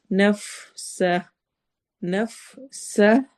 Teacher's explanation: سین میں سٹی والی آواز ہے